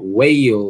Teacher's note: aproximante, posterior, né? Na parte de trás da boca, vozeada.